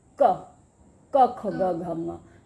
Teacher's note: तो पांचों के पांचों वर्ण वहीं से टच होके निकले, है ना। क ख ग घ ङ एक ही जगह है ना। तो इसका मतलब इन पांचों का जो उच्चारण स्थान है वो है कंठ · क एकदम बीच में भी नहीं, जो बीच की छत है उसको नहीं छुआ। गला जहाँ आरंभ होता है, जहाँ से स्टार्ट होता है, उसके ऊपर वाले भाग को छुआ जीभ ने। क ख ग घ ङ। तो पांचों के पांचों वर्ण वहीं से टच होके निकले, है ना। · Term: क वर्ग